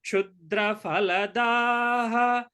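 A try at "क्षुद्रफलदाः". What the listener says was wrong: And also, sorry, I'm sorry, it is not Fa, it is Pa. There is no Fa in Sanskritam. In Hindi, you call it Phal. In Sanskritam, it is Phala, Phalam. So, Jagati Vibudhaha Kshudra Phaladaha.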